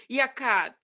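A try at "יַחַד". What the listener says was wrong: There's no cough drop. Yachad. I see the same vowel twice. It is definitely a chet and an ah. We've got cha.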